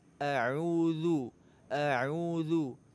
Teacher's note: Huruf zal makhrajnya ujung lidah dengan ujung gigi seri atas.